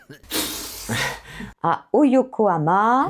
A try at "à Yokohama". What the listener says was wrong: Non, à Yokohama. Donc du coup, pourquoi tu prononces au Yokohama? On est parti à Yokohama.